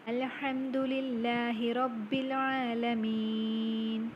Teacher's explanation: the last letter is read with a vowel and the mad letter is lengthened 2 vowel counts, that is normal mad.